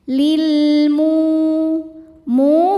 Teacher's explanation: Karena ada alif lam menghadapi huruf qamariah yaitu mim, maka lam dibaca jelas. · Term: alif lam qamariah